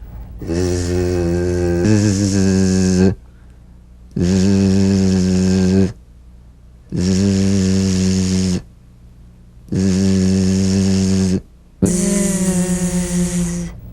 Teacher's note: So feel a smooth, strong vibration in the teeth and in the front of the tongue. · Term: Z sound